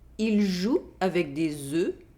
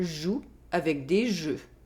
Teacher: Here, there is a difference in consonant sound. There is the [z] sound in the first sentence, and the [ʒ] sound in the second sentence.